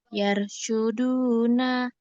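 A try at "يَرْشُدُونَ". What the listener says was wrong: salah, kurang tebal dikit, Bun. yaro. Jadi lidahnya dicekungkan terus naik ke langit ujung lidahnya. Yaro. Yaro.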